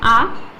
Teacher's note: आ का उच्चारण होता है हमारे गले से यानी हमारे कंठ से